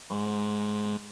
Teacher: the uvular nasal, not found in English or in any other language that I speak, but which is done, as the name suggests, on the uvular point of articulation. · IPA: ɴ